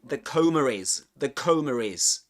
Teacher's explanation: coma ending in a schwa, and the next word beginning with the vowel sound I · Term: intrusive R